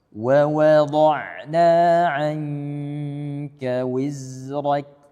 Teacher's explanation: waw pertama dan waw kedua ini bunyinya harus sama, jangan sampai dia waw kedua lebih tebal